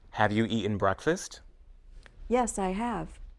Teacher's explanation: Have and has are also stressed at the end of a sentence.